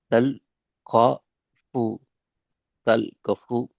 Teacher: தல் கஃபு. கா என்கிறது பிழை. கா நீட்டக்கூடாது.